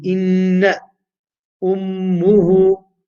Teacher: You nasalize the sound for the length of two vowels. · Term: Ghunnah